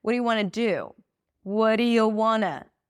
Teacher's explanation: want is not stressed. The do is stressed. We turn it into wanna.